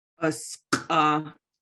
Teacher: That Q, that's the back of the throat, but when it's glottalized, it's a harder sound.